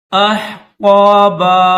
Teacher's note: حمزہ کے بعد یہ ہا ہے، اس کو پڑھتے وقت اس کو گلے سے ادا کیا جاتا ہے، حلق سے اس کو ادا کیا جاتا ہے